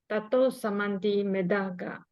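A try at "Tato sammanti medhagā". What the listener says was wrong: Yeah, Tatu Sammanti Medhaga. Not Samanti. Sammanti, 2M.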